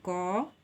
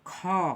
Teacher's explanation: तो अल्पप्राण व्यंजन वह है, जैसे समझिए आप क का उच्चारण कीजिए क और फिर ख का उच्चारण कीजिए ख, तो आप पाइएगा कि क के उच्चारण के समय हमारी मुंह कम खुलती है और हमारे मुंह से कम वायु बाहर आती है। लेकिन हम ख का उच्चारण करते हैं तो हमारे मुंह से अधिक वायु निकलती है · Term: महाप्राण